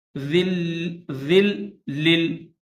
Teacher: ویل یومئذ ذال کے بعد دو لام ہے، ذال کے نیچے تنوین دو زیر ہے، اس کے بعد دو لام ہے، تشدید والا بھی ہے اور ساکن بھی ہے، تو ذال کو لام مشدد کے ساتھ ملائیں گے